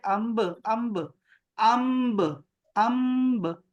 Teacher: اگر با آ جائے تو میم ساکن میں اخفا کے ساتھ غنہ ہوگا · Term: اخفا میم ساکن